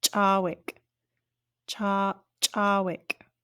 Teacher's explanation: We also have an ejective CH. So it's going to give like a puff of air.